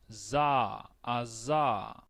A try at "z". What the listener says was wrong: No tenés la z, Cuando aparezca la Z, por eso hay que tener cuidado con eso.